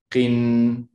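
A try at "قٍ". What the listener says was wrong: Oh, not qin. Qin. You want to hold the kasratain sound. Qin. I know it's difficult because it has to come out from the throat. With the kasra qaf is difficult.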